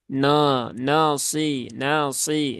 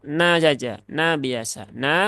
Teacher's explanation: nunnya pastikan dia tipis ya jangan sampai Nun ini ikut menebal